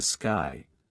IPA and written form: skaɪ (Sky)